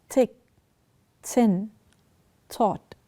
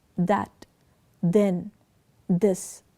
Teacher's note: the tip of the tongue in the articulation of these consonants is placed between the teeth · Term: inter Dental